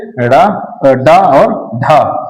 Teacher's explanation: कठोर ताल को छूकर झटके से नीचे आकर वायु निकालती है। उन्हें उक्षिप्त व्यंजन कहते हैं।